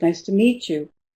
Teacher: Meet is the key word, the focus word.